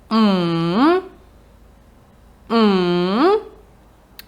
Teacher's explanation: ми маємо свою інтонацію спустити вниз і потім виштовхнути її вгору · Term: третій тон